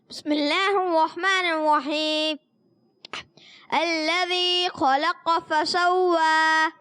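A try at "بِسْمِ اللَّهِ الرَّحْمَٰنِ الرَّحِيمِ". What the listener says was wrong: مگر جب آپ بسم اللہ پڑھتے ہیں تو سارا ناک سے پڑھیں. بسم اللہ الرحمن الرحیم, ایسے نہیں, کلیئر کر. بسم اللہ الرحمن الرحیم.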